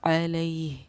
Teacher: یا ساکنہ سے پہلے کیونکہ زبر ہے تو یا حروف لین کہلائے گی. اس کو نرم آواز کے ساتھ ہم جلدی ادا کریں گے